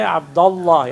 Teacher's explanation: And Alif will be dropped in pronunciation.